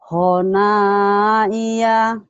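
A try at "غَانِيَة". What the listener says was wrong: Bukan hona Bu, ini gigi, barisnya di bawah. Gina. la'iba, bukan ina titiknya. Ini titiknya ada di bawah.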